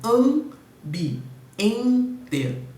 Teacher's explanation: E a palavra ambiente apresenta 2 dígrafos, só que dessa vez são dígrafos vocálicos, porque AM, na verdade, representa um som de A nasal e EN representa também um som de E nasal, né? Então eu tenho ambi, ente, temos 2 dígrafos aí.